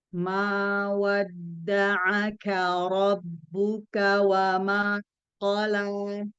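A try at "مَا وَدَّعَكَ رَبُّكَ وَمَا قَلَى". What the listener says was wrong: Bagus, tapi mimnya masih mau tipis nih. kemudian ain juga sama. Wadda'aka.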